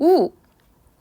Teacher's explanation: 혀 가 뒤쪽 으로 올라가는 듯 한 느낌도 듭니다